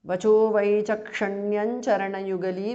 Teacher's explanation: Anuswara changes to nu there.